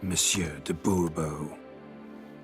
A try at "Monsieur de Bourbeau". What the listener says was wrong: The emphasis falls on the last syllable.